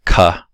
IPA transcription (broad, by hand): k